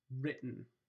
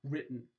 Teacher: You are going straight from the oral stop to the nasal stop. You're not actually producing a vowel. This is at least in the American English pronunciation. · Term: syllabic